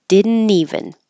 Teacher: the N will connect to the E here